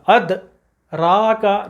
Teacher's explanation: اد حمزہ دال سے ملا قلقلہ، اد را کا، را کے اوپر زبر اس کے ساتھ الف، پورا پڑھنا ہے، مد اصلی ہے را کے ساتھ.